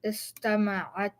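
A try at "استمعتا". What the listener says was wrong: So now the way you're saying it is istama'atta, like that. You see the shadda here? Get rid of it. Istama'ata.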